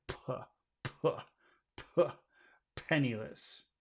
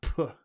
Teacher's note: when you say the p sound, you have to be pushing out a lot of air.